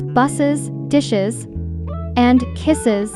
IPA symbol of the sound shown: ɪz